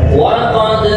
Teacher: Ini jim dan dal yang berharokat sukun dibaca qalqalah.